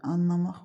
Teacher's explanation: Anlamaq sözündə son heca qüvvətli tələffüz olunduğu üçün deməli burada vurğu ikinci yox, üçüncü hecaya düşür.